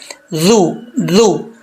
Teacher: ذال کو سیٹی سے نہیں پڑھیں گے، ذال کو نارمل پڑھا جائے گا